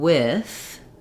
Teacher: for the D and then letting the th out with so if I'm saying with my I vowel goes right into my th sound